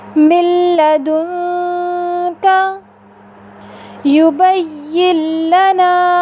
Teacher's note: نون ساکن اور تنوین کے بعد اگر حرف لام را میں سے کوئی بھی حرف آ جائے تو نون ساکن اور تنوین کو لام را سے ملا کر بغیر غنے کے مشدد ادا کرتے ہیں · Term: ادغام بلا غنہ